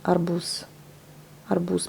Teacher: Mais on prononce pas le Z. On prononce pas le Z, on prononce plus le S.